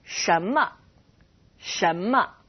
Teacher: The m in 什 么 is a neutral tone, otherwise known as 轻 声.